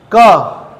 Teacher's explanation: कंठ से टकरा रहा है सर, कंठ व्यंजन है